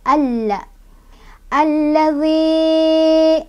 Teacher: Lam pertama sukun, lam kedua berharokat fathah. Nah, karena lam pertama sukun maka lam pertama nggak dibaca, kita bacanya langsung ke lam yang kedua. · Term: alif lam syamsiah